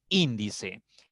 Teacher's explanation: Índice tiene 3 sílabas. Y la mayor fuerza contando de derecha a izquierda está en la tercera sílaba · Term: palabra esdrújula